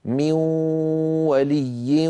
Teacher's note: من ولي لابد من صوتين، واو من الفم، غنة من الخيشوم، معا يبدأان معا وينتهيان معا.